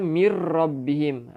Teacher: Kita masuk terus tanpa dengung, masuk dekat ra. Kita tak boleh baca mir rabbihim. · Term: idgham bila gunnah